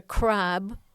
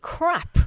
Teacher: So I've got, for example, I've got minimal pairs of words with ending in voiced and unvoiced obstruents. So speakers of German, of course, have problems with terminal devoicing in English